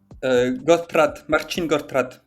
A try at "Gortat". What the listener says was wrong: Il a rajouté un R, c'est Gortat.